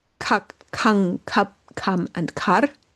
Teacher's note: So all of them keep the ah sound in them